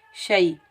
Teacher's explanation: ये याए लीन है, इसको हम नरमी और जल्दी से अदा करेंगे